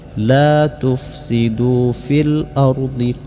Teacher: jadi alif lam qamariyah dibaca ilhar, lamnya terbaca jelas.